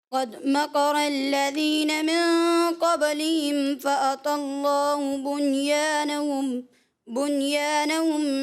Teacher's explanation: قد میں دال میں کلکلہ محسوس صحیح نہیں ہوا